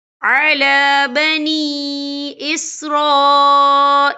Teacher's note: یہ مد جو ہے مد متصل ہے، اس کی مقدار جو ہے 4 حرکت کے برابر ہے، تو ہم اسے 4 حرکت کے برابر کھینچ کے پڑھیں گے